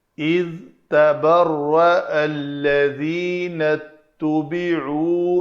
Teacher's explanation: ذال کا مخرج نوک لسان دونوں دانتوں اوپر والے اور نیچے والوں کے درمیان آئے، اگر پیچھے رہے گی تو وہ ذا بن جائے گا۔